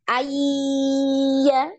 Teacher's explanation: Ayya ini masih ada getaran di hidung ya. · diidamkan itu secara tidak sempurna karena masih ada dengung ya Ada Mas masih ada dengungnya ada gunahnya ya Jadi tidak e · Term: gunnah